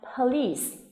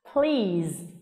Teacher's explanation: Một từ một bên là gồm có hai âm tiết và âm cuối cùng là âm s, trong khi một từ là một có một âm tiết và âm cuối cùng là âm z